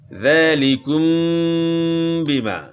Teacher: میم ساکن کے بعد با ہے متحرک ہے تو یہاں غنہ اخفا کے ساتھ کریں گے